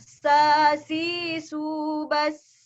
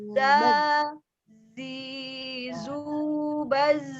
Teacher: Kalau sa keluar nafas. Sa, si, su keluar nafas. Kalau zai tidak boleh keluar nafas. Za, si. Tapi tetap mengalir suaranya.